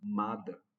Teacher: Enquanto o T na palavra mata, nesse sentido, seria uma consoante oclusiva surda, enquanto mada, por exemplo, ou amada, esse D ele é uma consoante plosiva ou oclusiva do mesmo ponto de articulação, né, coronal, mas que tem a sonoridade